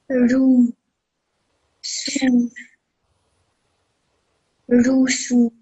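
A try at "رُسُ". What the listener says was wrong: Perfect. Both of these letters have dhamma on top of them for 1 second each.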